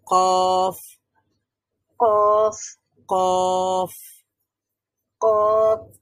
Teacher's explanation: দিকে ধাক্কা দিতে হবে হ্যাঁ হ্যাঁ তালুর সাথে যুক্ত করতে হবে জিহ্বার গোড়াটা উপরের তালুর সাথে মিলিয়ে আমরা কফ উচ্চারণ করতে পারি · কফ উচ্চারণের সময় জিহ্বার গোড়া বা জিহ্বার শেষ ভাগ, জিহ্বার গোড়া তার বরাবর উপরের তালুর সঙ্গে লাগিয়ে, এই যে জিহ্বার গোড়াটা আছে এখানে দেখেন, জিহ্বার গোড়া তার বরাবর উপরের তালুর সঙ্গে যুক্ত হবে, এটা হলো জিহ্বার গোড়া, এবং এটা উপরের তালুর সঙ্গে যুক্ত হয়ে কফ উচ্চারিত হবে।